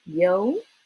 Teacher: you kind of start in the middle go up and then go back down and stay low